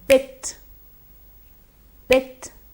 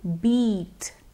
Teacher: the I sound is a short sound in the word bit, but in the word beat, it becomes a long stretched sound